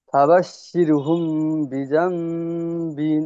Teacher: মিমের উপরে সাকিন এসেছে, সাকিনের অক্ষরকে ডান দিকের অক্ষরের সাথে মিলিয়ে পড়তে হয়, এবং মিম সাকিনের পরে বা এসেছে, তাই তাকে একালি পরিমাণ, মিম সাকিনকে একালি পরিমাণ গুণনা করে পড়তে হয়, একে ইকফায়ে সাফাবি বলে।